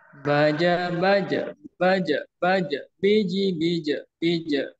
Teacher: ketika jimnya itu sukun maka dipantulkan dan bunyinya itu ke bunyi e gitu